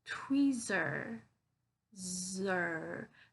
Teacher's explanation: So you got that vibrating z sound and zer, zer.